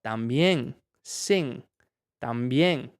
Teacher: Y me di cuenta que cuando, por lo menos en Costa Rica, cuando dicen también, esa N no se usa la lengua, la punta de la lengua, sino la parte de atrás, que es como, tenés la boca casi abierta, ¿verdad?